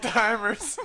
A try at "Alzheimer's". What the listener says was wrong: There's no T in Alzheimer's. Alzheimer's.